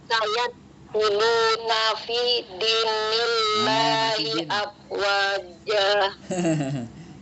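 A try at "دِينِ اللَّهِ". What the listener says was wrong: Masih din, jangan din, tapi dini. Ya, jangan din, tapi dini.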